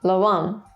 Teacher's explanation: Notice, by the way, the accent mark on the which indicates stress, and pitch accent, which gives the stressed vowel a higher tone